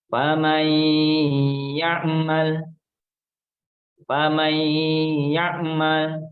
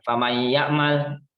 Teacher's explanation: Salah satu dari huruf idgham bi gunnah yaitu huruf ya. Maka nunnya ini tidak kita baca, langsung kita masukkan ke huruf ya. · Jadi untuk membedakan antara yang bukan bi gunnah atau yang bukan bertasdid. Maka huruf idgham bi gunnah harus didengungkan. Didengungkan minimal 2 harokat.